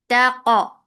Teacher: And for fatha open jaws, attach it qaf. Qaf will get sifa of qalqala. This qalqala should be very nicely done. Taq. And qaf is heavy.